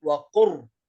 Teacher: لا نأتي بحرف اللام، لا ننطق حرف اللام، لا نقول وقل ربي، نقول وقر، قاف في الراء مباشرة، نحذف اللام، فهنا إدغام كامل.